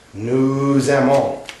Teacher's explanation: when the next word starts with a vowel, in this case we have an A, it sounds like a Z